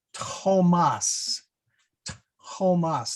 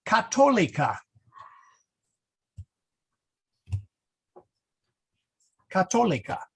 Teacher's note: whenever you see a th in a word in Latin, you don't pronounce it as a th, you pronounce it as a t